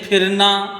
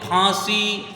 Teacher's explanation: نیچے کے ہونٹ سے مل کر فا ادا ہوتا ہے، اور یہ والا جو پھا ادا ہوتا ہے اردو والا وہ دونوں ہونٹوں ملا کر پھا ایسے بول دیا جاتا ہے